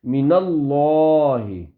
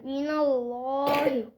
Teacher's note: لفظ اللہ کا لام پر ہوگا, موٹی آواز میں پڑھیں گے